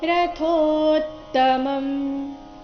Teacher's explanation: ರಥೋತ್ತಮಂ, ರಥೋ ಥೋ ಮಹಾಪ್ರಾಣ ದೀರ್ಘ ಇದೆ, ಅದರ ನಂತರ ತಕ್ಕೆ ತದ್ ಒತ್ತು ಬಂದಿದೆ, ಸ್ವಲ್ಪ ಒತ್ತಿ ಹೇಳಬೇಕು